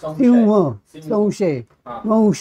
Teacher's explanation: लेब्युलाईज म्हणजे अशी अवस्था होते ओठांची की ते व सारखे गोलाकार होतात आणि तिथे व असा ध्वनी निर्माण होतो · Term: लेबुलाईज्ड